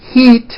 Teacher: think of the sound e as in heat as being high up